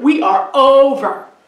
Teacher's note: I hear the O. So I would say that O is stressed and ver is unstressed.